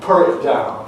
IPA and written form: pʊr ɪt daʊn (put it down)